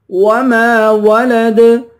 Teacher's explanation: آخر میں دال ہے، دال پر قلقلہ کریں گے